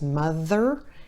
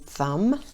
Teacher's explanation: the Th sound, which is voiced and unvoiced, mother, and thumb.